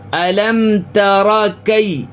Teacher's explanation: یائلین کو جلدی پڑھتے ہیں